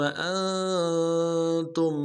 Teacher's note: ثم اگلے میم کو نون سے ادا کرنا ہے۔ انتم حمزہ کو نون ساکن کے ساتھ ملانا ہے، نون ساکن میں غنہ کریں گے